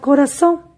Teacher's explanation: donde recae la mayor fuerza de voz, es en la sílaba son, en la última sílaba. Eso lo llamamos sílaba tónica.